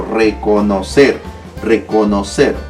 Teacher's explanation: si te das cuenta tiene la mayor fuerza de voz en la última sílaba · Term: sílaba tónica